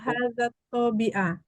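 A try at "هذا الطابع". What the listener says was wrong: Tapi kayaknya fathah dia. Toba. Toba. Fathah dia. Banyak fathah. Toba.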